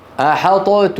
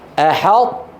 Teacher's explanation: يطبقون على طاء غير مقلقلة ويجافون اللسان، يعني يباعدون اللسان على تاء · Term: ناقص